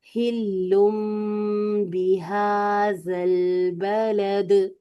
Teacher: ठीक है तनवीन के बाद जी तनवीन या नून साकिन के बाद हमें जब बा नजर आता है ना तो हम क्या करते हैं कि इसे हम नून की आवाज को मीम में आपने सही बताया था नून की आवाज को मीम में बदल देते हैं। फिर मीम पर हंठ बंद रहते हैं। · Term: इकलाब